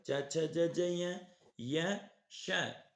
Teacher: ई चु च वर्ग च छ ज ज य श शलगम, इनका उच्चारण स्थान तालु है, इसलिए इन्हें तालव्य वर्ण कहते हैं।